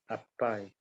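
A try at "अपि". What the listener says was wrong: If you say English, pronunciation would be apai, yes, but that is Sanskrit.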